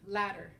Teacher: the r kind of sounds like the double d and ladder and your tongue is going to kind of flap